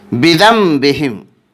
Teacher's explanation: بذنبہم، اس میں ایک قاعدہ اقلاب ہو رہا ہے کیونکہ نون ساکن کے بعد با آ رہا ہے، اس لیے نون ساکن کا اقلاب ہوگا۔ نون ساکن کو میم ساکن سے بدل کر غنہ اور اخفا کے ساتھ پڑھیں گے۔